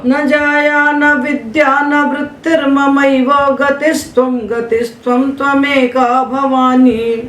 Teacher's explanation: दो चरण समान बोलिए, तीसरे को ऊंचा पढ़िए, चौथे को समान ले आइए।